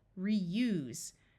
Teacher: This S is going to have its voiced sound of Z.